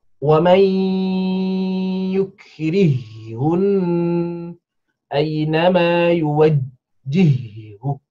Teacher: huruf ha diidghamkan pada ha